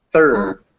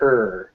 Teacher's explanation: a schwa and an r next to each other sound like er like kind of like the the r takes over just er